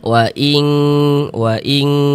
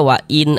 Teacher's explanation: ikhfa hakiki ab'ad ini dia ketika mengucapkannya itu lebih condong berbunyi eng waing waing seperti itu.